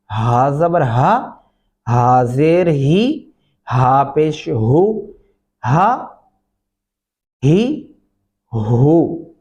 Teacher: अब यहाँ पे ये जो हा है ये मोटा वाला हा है, इसको मोटा हा, भारी आवाज सीने से अदायगी होती है इसकी